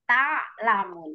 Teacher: Taknya jangan tak, tapi langsung tak. Jadi ain yang memanjangnya ya, bukan taknya.